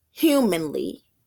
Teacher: of meter such as in the word humanly in Didact oh we put stresses on the first syllable and do not stress second